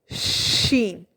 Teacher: ज़बान के दरमियान वाले हिस्से के बिल्कुल ऊपर तालू के दरमियान वाला हिस्सा है, वहाँ टच होगा तो आपका अदा होगा शीन